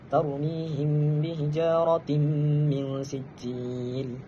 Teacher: Yakni hukumnya ialah idgham maal ghunnah. Bacaan dia idgham memasukkan tanwin kepada huruf mim. Yakni kita baca dengan dengung dengan kadar dua harakat. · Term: idgham ma'al gunnah